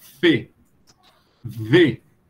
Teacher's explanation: O que difere aí a vibração ou não das cordas vocais